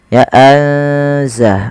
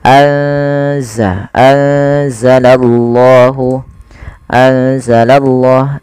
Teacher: Maka cara membacanya yaitu memasukkan nunnya atau menyamarkan nunnya kepada huruf zai. Ya, anza langsung kepada makhraj daripada huruf zai. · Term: ikhfa